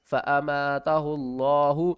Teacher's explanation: لفظ اللہ سے پہلے اگر پہلے حرف کے اوپر پیش ہوگی تو لفظ اللہ کو ہم موٹا پڑھیں گے